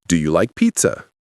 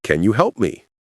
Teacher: These questions can be answered with yes or no, and they rise at the end. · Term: Yes, no questions rise